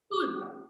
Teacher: Your L sound is silent.